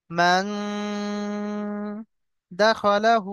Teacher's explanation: নুন সাকিনকে একালি পরিমাণ গুণনা করব। মান দাখালাহু, আর হাকে আমরা একালি পরিমাণ টান দেব।